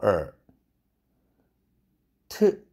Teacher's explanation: 트 할 때 혀끝이 잇몸에 닿죠. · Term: 치경음